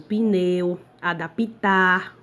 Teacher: problema da vogal átona I, pronunciada, mas não escrita, que é o pneu, que você pensa que tem o som do I, né?